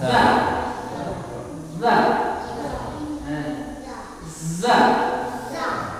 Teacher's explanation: kalau ini Za tidak rapat ada ada udara sedikit Nah baru bergetar · Za dia juga di ujung lidah dengan gigi atas tapi tidak rapat ya sedikit ada Uda sedikit supaya bergetar ada getaran karena [Musik]